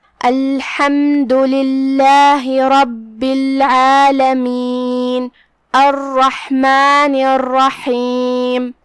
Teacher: ہم حا کو حلق کے درمیان والے حصے سے پڑھیں گے.